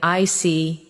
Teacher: When you show understanding with "I see," your tone drops slightly to show calmness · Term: Intonation